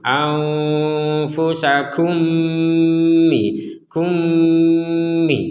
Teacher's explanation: mim yang pertama masuk kepada mim yang kedua sehingga menghasilkan dengungan. Harus ada baca dengan dengungan.